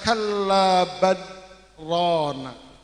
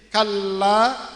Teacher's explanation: Kalau sumpama tidak disaktahkan, maka akan terjadi idgham bila gunna karena ada lam bertemu dengan ro. Ketika tidak disaktahkan, maka akan menjadi kallabarona.